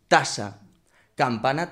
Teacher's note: La T solo cambia en que se pronuncia con la parte delantera de la lengua en las arruguitas que tiene el paladar duro ahí detrás de los dientes. Y la K se eh pone la lengua justo en el velo de paladar atrás. Solo se diferencian en ese rasgo.